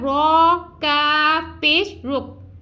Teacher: रॉ को पुर पढ़ना है और काफ की आवाज़ सिर्फ इसके साथ मिलानी है